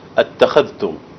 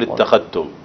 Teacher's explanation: طيب نأخذها واحدة واحدة. أتخذتم الذال ظاهرة نظهرها عند التاء